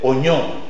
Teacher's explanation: C'est une consonne nasale, palatale et sonore.